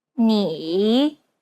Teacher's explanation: It's the most unique tone out of all the tones because the pitch dips and then rises. 你、 Imagine a ball bouncing on the ground as you make this tone. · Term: third tone